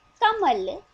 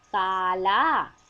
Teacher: और ओ की मात्रा चली, क से मिली तो बन गया को। अब देखिए कमल, आवाज एक झटके के साथ रुक रही है। काला, देर लग रही है मगर आवाज आराम से चल रही है।